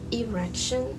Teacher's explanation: my tongue trolled me, and it replaced the L in election with a R